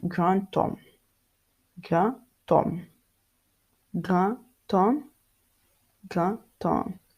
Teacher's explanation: The D in front of the silent H, it becomes T